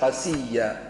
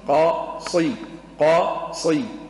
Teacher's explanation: قصيا بالصاد المفخمة، فيها كل صفات القوة. نعم، الاستعلاء والإطباق وما إلى ذلك.